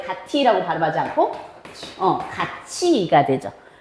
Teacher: 가티라고 발음하지 않고 가치가 되죠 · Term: 국외음화